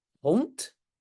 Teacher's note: En néerlandais officiel aussi, le D à la fin, on prononce comme T, oui.